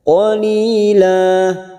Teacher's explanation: la fathah tanwin yang dibaca wakaf mat iwad 2 harokat kita panjangkan